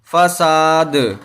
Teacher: اب یہاں جب ٹھہریں گے تو دال کو ساکن کریں گے، اور دال حرف قلقلہ میں سے ہے، تو جب وہاں ٹھہریں گے تو دال کے اوپر قلقلہ بھی کریں گے